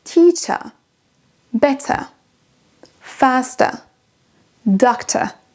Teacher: l'anglais britannique va s'arrêter sur un son schwa, on n'entend même pas le R à la fin